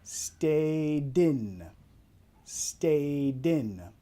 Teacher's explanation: cuando hay un vocal que lo sigue, en este caso el I en in, vamos a vincular la D y la I en in